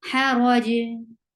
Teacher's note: You will give sukoon, and jim with sukoon will get sifa of qalqala.